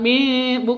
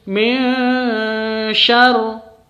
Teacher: Ini samar antara nun sukun dan shin itu disamarkan. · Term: ikhfa